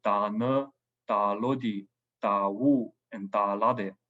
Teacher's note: For the back vowels, for verbs that start with a back vowel, like ne, lodi, wu, and lade, we have the back vowel on the prefix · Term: vowel harmony